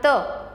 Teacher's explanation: ओट एक दूसरे को स्पर्श करते हैं इसी तरह त इसमें हमारी जीभ की नोक दांतों को स्पर्श करती है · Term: स्पर्श व्यंजन